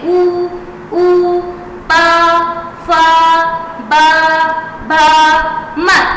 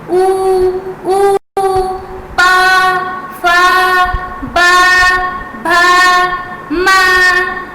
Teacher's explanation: टंग तो अंदर ही रह गई, आपके होठ आपस में टच करेंगे। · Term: ओष्ठ